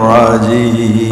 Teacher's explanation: Jim tengah lidah, bukan jim jajan.